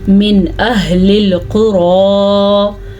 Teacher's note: تو اس نون کو ظاہر کر کے پڑھیں گے، یعنی کہ من اہل القری، قاف کو پر پڑھنا ہے اور را کو بھی پر پڑھنا ہے کیونکہ را کے اوپر کھڑی زبر ہے